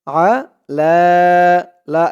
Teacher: এক আলিফ টান খাড়া জবর আলা